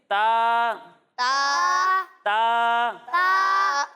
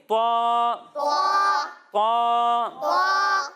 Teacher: جب ہم طا کی ادائیگی کریں گے تو یہ حروف مستعلیہ میں سے ہے، اس لیے اسے موٹا کر کر پڑھیں گے